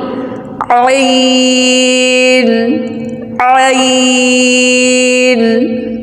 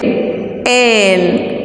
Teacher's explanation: Ayn comes out from the middle part of the throat.